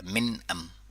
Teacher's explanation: نون ساکن میں اظہار اور میم ساکن میں بھی اظہار. نون ساکن میں جو اظہار ہو رہا ہے اس کو اظہاری نون ساکن کہتے ہیں. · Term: اظہار شفوی